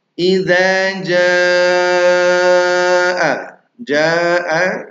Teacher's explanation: bedanya setelah ja hamzah maka yang awalnya dua harakat kita panjangkan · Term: mad wajib muttasil